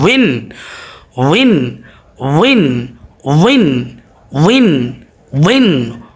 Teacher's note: এই উপরের যে দুইটা দাঁত আছে সেটা নিচের ঠোঁটের প্যাটের সাথে লাগবে।